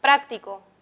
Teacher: en la palabra práctico encontramos el acento en la antepenúltima sílaba